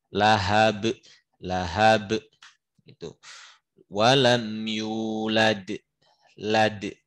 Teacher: kalau kubro dia di akhir, dia nggak ngalir, jadi lebih terasa kol-kolahnya